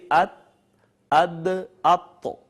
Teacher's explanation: یہ تینوں زبان کی نوک اور اوپر والے جو دانت ہیں ثنایا علیہ، ان کی جڑوں سے جب زبان کی نوک لگتی ہے تو یہ تینوں ایک ہی جگہ سے ادا ہوتے ہیں. ان کا مخرج ہے نوک زبان اور ثنایا علیہ کی جڑیں